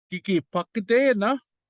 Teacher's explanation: initial consonant change from B to P. And then our question it ends in a vowel, so we just add na.